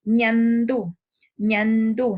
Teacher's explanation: Palatales se llaman así porque la zona media de la lengua va a entrar en contacto con el paladar duro